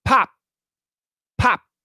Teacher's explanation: the p the k and the t are not vibrated so it's real fast